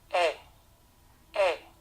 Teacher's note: Otro sonido que la E francesa puede tener es una E un poco más abierta que la nuestra. E. Recuerden, el símbolo que representa a este sonido es el de un 3 al revés. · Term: E abierta